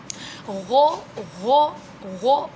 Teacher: تو جو حلق کا اوپر والا یعنی ادنا حلق کا اوپر والا حصہ ہے وہاں سے غین ادا ہوتا ہے. اس جگہ پر فنگر رکھیں اور بچے سے بولے غ ایسے آواز نکالے، جیسے خو کی آواز نکالی تھی ویسے ہی غو غو غو.